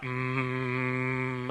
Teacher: you can make an M sound as long as you want mm-hmm as long as you have air because the air has a way to escape